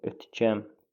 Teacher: İncə saitlərin ahəngi gözlənmişdir. Bəli, hər ikisi incədir. · Ötkəm sözün öt gəm kimi tələffüz olunur. Vurğuda sonda olur. Ötgəm. Saitlərin hər ikisi açıq saitdir. · Saitlərin hər ikisi açıq saitdir. Ö-dür, ə-dir, açıq saitdir. Yazılışı ilə deyilişi fərqlənir.